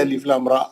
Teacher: 8 حرکت ہے، لام کے 6 را کے 2